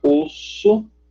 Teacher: Então, reparem, você tem a consoante S, S, que a gente pronuncia, reparem, a pronúncia dela, a gente deixa a boca mais estendida, S. Só que, como a vogal que vem depois dela é um O arredondada, repare quando a gente vai pronunciar osso, o S adquire a característica de arredondamento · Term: labialização